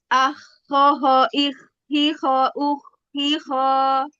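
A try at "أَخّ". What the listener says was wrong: Nah, disempurnakan dulu dia tawasud pada apa namanya rokhwah pada huruf ko-nya. Di sukun pada tasdid di situ. Akho baru. Jadi jangan langsung akho, hilang dia rokhwahnya.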